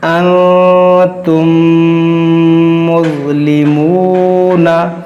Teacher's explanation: मीम साकिन के बाद दूसरी मीम हो तो इदगाम शफ़वी होगा, यानी कि गुन्ना होगा।